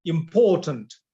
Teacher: So the second part is stronger than the first part or the third part.